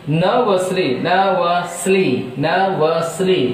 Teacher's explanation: nervously, 3 syllables, so the stress is on first syllable.